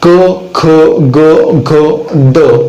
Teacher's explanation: पुढचे व्यंजन पाहू जे कंठेच आहेत, म्हणजे ज्यांचा उच्चार कंठातनच होतो.